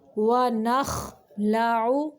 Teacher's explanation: خا کو ادنائی حلق یعنی حلق کا وہ حصہ جو منہ کی جانب ہے وہاں سے نکالنا ہے، عین کو وسط حلق سے نکالنا ہے، حلق کے درمیانی حصے سے۔